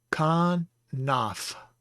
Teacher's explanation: Notice no dagesh in this pei, so it is the fricative sound, fe.